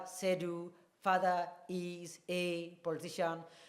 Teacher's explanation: And the stressed word there is Sedu, meaning it's the loudest. Sedu's father is a politician, meaning I mean Sedu and not any other person.